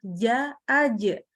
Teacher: huruf Jim tadi kalau dia tepat di tengah lidah ja aja ini tidak akan keluar udara